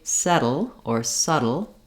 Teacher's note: build up any pressure so when I say settle or subtle it's just a light little touch with my voice voice on and then my tongue comes back · the flap sound is a voiced sound that is like a T and A D except that we don't build up any pressure